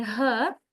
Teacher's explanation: You can feel when you say her, it doesn't um involve any speech organ located inside the mouth · It is produced inside the larynx H with the use of the vocal cords. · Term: glottal consonant